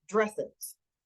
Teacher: So the suffix es is reliably unstressed. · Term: unstressed es